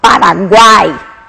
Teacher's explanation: o A é praticamente o som vocálico que eu ouço. O U e o I são tão sutis que quase a gente não percebe. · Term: tritongo